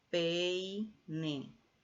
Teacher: Diptongo decreciente con una vocal abierta más una vocal cerrada.